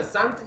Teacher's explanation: दंत स में हमारा दंत और जिह्वा का टच होना, इसीलिए दंत स बोलते हैं।